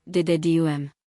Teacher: two unstressed then one stressed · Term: Anapestic